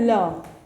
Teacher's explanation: पार्श्विक व्यंजन होता है जिसका उच्चारण करते समय हवा पार्श्व के दोनों हिस्सों से निकलती है, उसको बोलते हैं पार्श्विक व्यंजन।